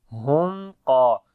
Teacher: Wa idha ra'awhum qa, hum qa. Qaf and alif we read in heavy sound.